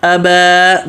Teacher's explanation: ابا کا حمزہ پتلا، ابا، با بھی پتلا